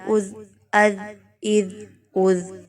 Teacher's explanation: زبان کی نوک کو باہر نکالنا ہوگا تو اس حرف کی ادائیگی ہوگی